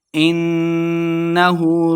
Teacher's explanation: نون مشدد ہے، غنہ کرنا ہے